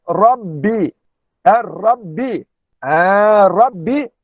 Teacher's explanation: Rabbi yang disebutkan di sini Ra mufakhamah. Iaitu Ra mufakhamah. Dalam ilmu tajwid, Ra tebal.